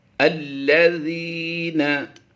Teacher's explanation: ज़ाल याज़ी या मद्दा है, यहाँ पर हम थोड़ा लंबा करके पढ़ेंगे। अल्लज़ीना, ज़ाल बारीक भी पढ़नी है हमने, इसकी अदायगी ज़ा नहीं होती बल्कि ज़ा होती है।